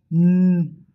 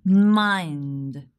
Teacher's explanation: The air comes out from the nose, not from the mouth. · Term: Nasals